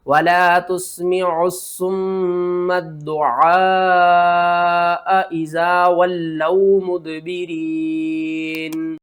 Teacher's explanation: یہ کرتے ہیں تا سین پیش تس، میم زیر می، تسمی، عین صاد پیش عس، صاد پیش میم سم، عسم، میم دال زبر مد، دال پیش دو، ولا تسمع الصم الدُّعَ، عین الف مد زبر آ، حمزہ زبر آ، آ۔ اس مد کا نام ہے مد متصل، اس کو آپ نے 5 الف کے برابر کھینچ کر پڑھنا ہے